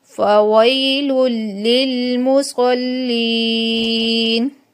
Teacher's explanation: دو پیش کے بعد لام یرملون میں سے تو ادغام بلا غنہ ہوگا، لمبا نہیں کرنا ہے